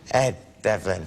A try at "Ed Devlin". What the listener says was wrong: No, you're strangling it here. Ed Devlin!